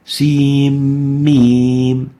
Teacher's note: The nun at the end of the sin is merged, is having idgham into the following letter, mim. This idgham makes this letter compulsory mad heavy.